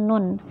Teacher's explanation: Jadi ujung lidah bergeser sedikit dari makhraj lam. Nah, di sini bisa pula dikatakan makhraj ini hanya menggeser ujung lidah sedikit ke depan dari posisi makhraj lam.